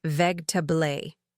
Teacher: We completely drop that middle syllable and make it flow like one smooth word.